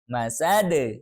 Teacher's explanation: Dal kan qalqalah ya. Maka kita qalqalah kubro kenapa? Karena huruf qalqalahnya ada di waqaf.